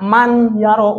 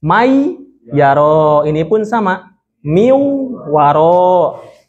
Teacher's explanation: Contoh pembacaannya adalah ketika ada nun mati ataupun tanwin bertemu dengan salah satu huruf idgham, maka nun matinya ini seakan-akan melebur atau seakan-akan nggak dibaca